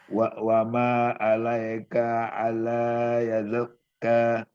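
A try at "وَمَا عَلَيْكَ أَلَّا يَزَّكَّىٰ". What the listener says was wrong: yazzakka, yaznya itu ditahan dulu. Zakka gitu. baca dulu yang yaz dulu, ya sama zaknya itu. Yaz, berhenti dulu. Nah, berhenti dulu. Jangan sampai yazak, tapi yazzakka gitu. Nah, wa ma 'alaika alla yazzakka.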